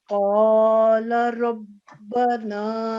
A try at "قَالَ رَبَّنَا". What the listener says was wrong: الف مدہ ہے ساتھ, اس کے ساتھ لام کے ساتھ الف مدہ ہے تو 2 سیکنڈ آواز لمبی کر کے اسے بولیں.